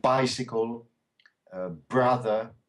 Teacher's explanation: And the B is short. It's like a P almost. P, B. So bicycle, brother.